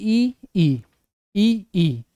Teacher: बाद वाला यानी कि ई ई ई ई तालब में होगा ई ई बोलेंगे तो आपको लगेगा महसूस होगा कि हां ऊपर से बोल रहे हैं तालो से बोल रहे हैं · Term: तालव्य